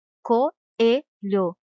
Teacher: da outra mas na separação de sílabas devem ficar separadas pois as duas vogais tem som forte e demorado por isso são chamados de hiato e não de ditongo elas ficam separadas e não juntas na